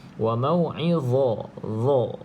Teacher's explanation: Itu di mana tempat keluar dia. Huruf dha ni hujung lidah, tuan-tuan dan puan-puan cuba buat. Hujung lidah kena pada gigi atas bahagian depan.